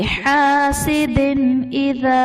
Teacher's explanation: یہاں پر اظہار کا قاعدہ ہو رہا ہے، یہاں پر ہم غنہ نہیں کریں گے